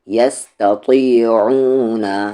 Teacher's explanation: تا لائٹ اور پھر طی ہیوی